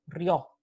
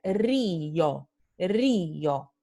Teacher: Entonces, ustedes van a ver que aquí la transcripción fonética no tiene una semivocal. Esta I no es semivocal. Es una vocal completa, es una vocal pura. · Entonces sabemos que se pronuncia río, río. O sea, I y O no forman diptongo, forman hiato · tenemos que separar estas dos vocales y ponerlas en sílabas diferentes